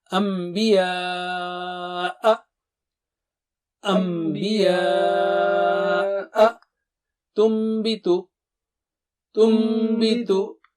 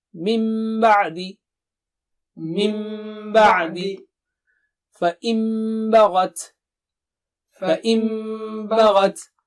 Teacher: Make sure you do it with ghunna. So if you have a Noon Sakina followed by ba, so it is changed with meme.